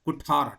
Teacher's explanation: ಸಂಸ್ಕೃತ ಪದ ಕುಠಾರ ಠ ಮಹಾಪ್ರಾಣ ಇದೆ